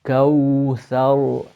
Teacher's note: When you look at my lips, they're pouting out kaw thar, because the waw is pronounced from the lips. Kawthar, and then back for the ra, which is the tip of the tongue touching the gums just behind the central, at the center and side.